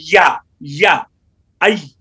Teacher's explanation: دونوں ہونٹ شفتین، اور دونوں ہونٹوں کو اس طرح گول کیا جائے کہ درمیان کھلا رہے. یا کا بھی اپنا مخرج ہے کہ زبان کا درمیان اوپر مقابل تالو کے ساتھ لگے